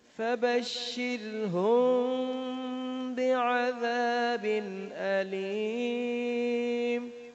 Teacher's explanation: فبشرهم میں میم ساکن کے بعد با ہے تو یہاں پر بھی اخفا ہوگا، غنہ ہوگا. فبشر یہاں را کو باریک پڑھیں گے، دیکھیں نا را ساکن اس سے پہلے زیر ہے